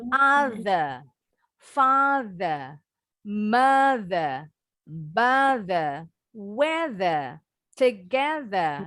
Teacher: kalau English, British English, huruf R terakhir nggak pernah bunyi.